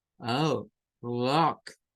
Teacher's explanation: Es una especie de A que suena como O